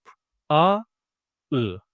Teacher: These vowels are back vowels because they are articulated at the back part of the mouth. But they are also unrounded ones because while we are articulating them, our mouth doesn't take a round shape.